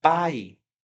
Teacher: você tem aqui uma pronúncia do a muito mais forte do que o i. muito mais forte do que o i.